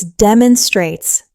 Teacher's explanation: The pronunciation is demonstrates. Four syllables with stress on that first syllable.